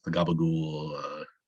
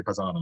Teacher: I use the kind of American Italian accent where like they don't use it's like the Sicilian. They don't use the final vowel a lot of the times. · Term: drop that last vowel